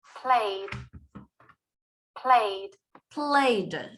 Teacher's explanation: It's like the E disappears. We do not pronounce the E in that played ending. We just pronounce like the Y with the D.